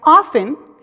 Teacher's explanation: Mucha gente lo pronuncia often, donde la T es muda. Mucha gente lo pronuncia often, donde la T no es muda.